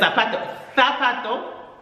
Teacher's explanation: your Z is always a TH, and your C almost, it sounds almost like a TH.